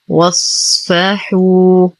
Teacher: لدينا واو ساكنة ما قبلها مضموم فهو مد طبيعي بمقدار حركتين. واصفحوا نفخم الصاد نعطيه الصفيرة والرخاوة والاستعلاء. نتم ضمة الحاء بعدها واو ساكنة فهو مد طبيعي بمقدار حركتين.